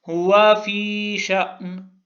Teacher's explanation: یا مدہ ہے فی میں، اس لیے تھوڑا سا کھینچا ہے